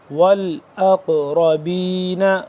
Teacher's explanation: قاف اس کو قلقلہ کریں گے